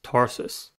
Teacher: tarsus has two syllables and the stress is at the first one the first level is tar to r a controlled by r